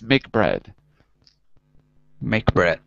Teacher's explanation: there's no air released at the at the end of the first consonant and there's a very smooth change to the second consonant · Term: c to c connection